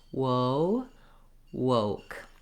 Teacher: So there's a lot of gliding around going on here. I'm doing the ooh, so thinking of starting in oo, opening to O, and then closing back and relaxing. · So when I'm saying whoa, you can see my lips start off very pursed, whoa, and then they open up, and then again, the O sound in English is another gliding diphthong vowel. It means I start from the O and then I close my jaw and my lips get a little bit less round and a little bit less tense. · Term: w glide, rounded position